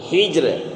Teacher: زیر ہے، ہا جیم اور را، تو ہا کے نیچے زیر ہے، اس لیے را کیا ہوگی؟ باریک ہوگی